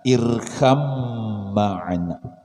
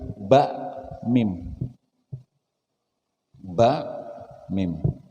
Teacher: Ba lawan mim ini satu jenis. Huruf keluarnya sama di bibir. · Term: idgham mutajanisain